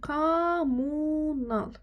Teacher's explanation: Amma kommunalda m-nın biri düşür.